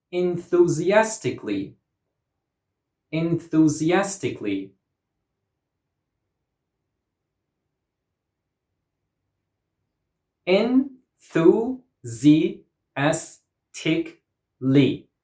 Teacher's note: This word has 6 syllables, and the stress goes on the 4th syllable.